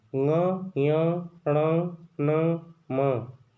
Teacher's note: इन सभी वर्गों के जो अंतिम वर्ण हैं, इनका उच्चारण करने के लिए हमको नाक का प्रयोग करना पड़ता है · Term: नासिक के वर्ण